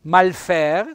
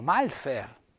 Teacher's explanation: con l'accento vedete tonico sulla e